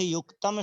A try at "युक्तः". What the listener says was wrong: युक्तम नहीं है, युक्तः है।